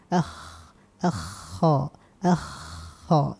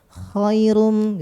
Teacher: huruf kha itu di atas bagian tenggorokan bagian atas adalah halq